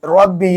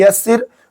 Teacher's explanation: रब्बी में रा को पुर करेंगे यसिर में बारीक